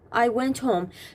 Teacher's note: The sound of t it flows directly into the h.